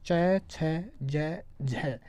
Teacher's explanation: स्पर्श के साथ संघर्ष होता है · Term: स्पर्श संघर्षी